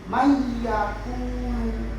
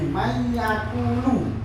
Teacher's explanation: ada nun sukun, kemudian langsung dimasukkan ke ya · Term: idgham